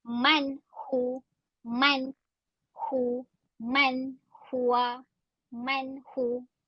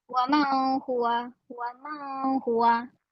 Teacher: Okey, nun mati dekat waman tu bertemu dengan ha dekat perkataan huwa. Sebutan kena jelas dan tidak dengung, tidak berlaku dengung di dalam ayat itu.